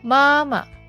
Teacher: The fifth tone, soft and short.